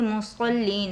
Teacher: स्वाद को पुर करिएगा और लाम स्वाद को पुर करने के चक्कर में लाम को मत पुर कर दीजिएगा, लाम बारीक ही रखेंगे